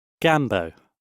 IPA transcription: ˈɡambəʊ